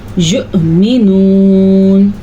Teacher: واؤ نہیں پڑھا جائے گا بلکہ ساکن والا حمزہ پڑھا جائے گا